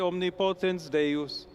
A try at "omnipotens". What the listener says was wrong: Omnipotens. He actually mispronounced the stress there. Omnipotens Deus. I do have to say, though, that his vowel length is pretty good.